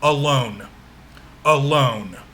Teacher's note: that's one word but it consists of two syllables right and notice that the first syllable is unstressed and the second syllable is stressed